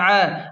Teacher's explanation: عین کو حلق کے درمیان سے صاف نکالیں